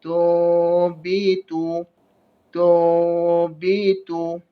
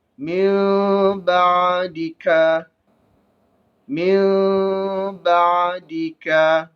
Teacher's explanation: Kita tukar huruf nun itu kepada huruf mim beserta dengung. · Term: iklab